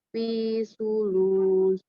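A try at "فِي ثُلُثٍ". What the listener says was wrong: Kalau begini bacanya langsung. Fisu. Nah, ini malah jadi huruf sin. Fisulus. Susah ya, pas baca fi lidahnya terus keluar susah ya.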